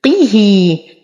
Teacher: نتم كسرة القاف والها ولدينا صلة صغرى بمقدار حركتين. ويق نقلقل القاف فهي من حروف قطب جد مع تفخيمها.